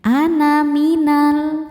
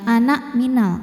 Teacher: Artinya nun fathah tanpa alif bacanya pendek. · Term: sifir mustatil